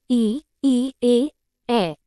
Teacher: जिन स्वरों के उच्चारण में जीभ का आगे का भाग सक्रिय रहता है। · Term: अग्र स्वर